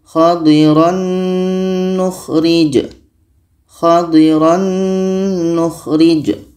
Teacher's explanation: tanwin ini di dalamnya ada bunyi Nun maka sudah otomatis masuk ke bunyi Nun